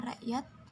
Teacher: akan selanjutnya ada simbol tanda tanya ini digambarkan sebagai huruf k penyebutan hamsah pada kata rakyat yang tidak disebutkan huruf k